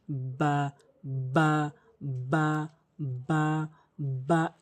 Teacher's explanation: দুই ঠোঁটের ভেজা অংশ মিলিত করে বা হরফটি উচ্চারণ হয়। বা বা এভাবে উচ্চারণ করবেন।